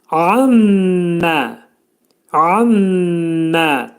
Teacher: ammə dedikdə ayn hərfinin məxrəcini izhar edirik boğazın ortasından. Mim hərfi, buna ğunnə hərfi deyirlər.